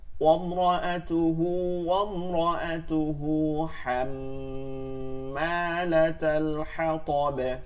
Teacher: ওমরা না কিন্তু, রটা পুর হবে, র হরফে জবর পেশ থাকলে পুর